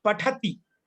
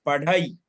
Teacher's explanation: जैसे अभी संस्कृत में पठती, पठ ठा आता है, ठीक है ना, मगर इसमें ठा की जगह पे ढा शब्द आएगा, पढ़ई।